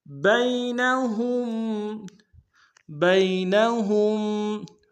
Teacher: بین میں با کو یا کے سامنے لائیں گے، یا لین بغیر کھینچے پڑھیں گے